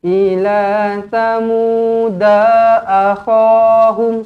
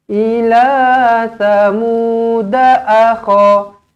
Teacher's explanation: Jangan ila tamuda akhahum, salah. Da ini pendek satu harakat.